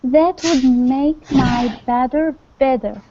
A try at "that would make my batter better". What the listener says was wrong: yeah good